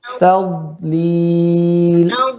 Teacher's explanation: Penekanannya pada sisi tepi lidah, ya, bagian kiri atau kanan.